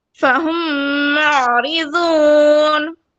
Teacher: हम मीम में जो मीम साकिन है ना, उसको मैं गिरा दे रही हूँ और मुशद्दद मीम से कंटिन्यू कर रही हूँ, फहुम मुअरिज़ून, इस तरह पढ़ रही हूँ, ठीक है जी। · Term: इदगाम शफवी